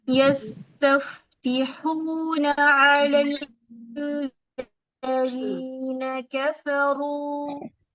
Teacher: यस्तफ्तिहून की नून की जबर को लंबा नहीं करेंगे